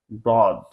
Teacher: জিহ্বার কোণ উপরের মারির দাতের সাথে স্পর্শ করে উচ্চারণ করতে হবে আমাদেরকে দই হরফটাকে।